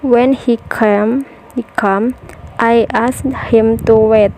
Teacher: The first sentence beginning with subordinate clause have rising intonation and followed by falling intonation for the main clause. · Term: combined intonation